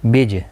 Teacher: بج جیم ساکن پر قلقلہ ہوگا.